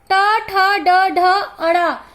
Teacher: इसे मूर्धन्य व्यंजन या मूर्धा व्यंजन कहते हैं क्योंकि जब हम इस वर्ग का उच्चारण करते हैं तो हमारा जीभ हमारे मूर्धा से टकराता है।